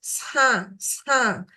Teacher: It comes out with a very distinct nasal airflow.